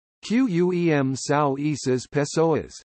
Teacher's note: In the Portuguese examples, the M at the end of Quem is an approximant. It is also a marker for nasalization, as is the nasal diphthong ao in sao.